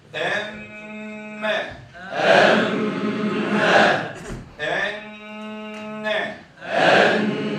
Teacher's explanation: Mim ve nunu şeddeli gördük mü, 1,5 elif miktarı çekeceğiz inşallah. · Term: teşdid